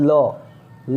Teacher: उच्चारण में हवा जीभ से बगल से निकले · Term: पार्श्विक